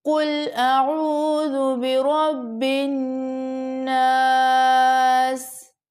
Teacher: اب نیکسٹ پھر نون کو زبر کے ساتھ ہم پڑھیں گے الف کے ساتھ جوائن کرتے ہوئے، تو یہ پھر الف مدہ بن جائے گا، اس کو بھی ہم 1 سیکنڈ کے لیے کھینچیں گے، اور لاسٹ میں ہماری آیت مکمل ہو رہی ہے تو ہم سین کو ساکن کر دیں گے، قل اعوذ برب الناس۔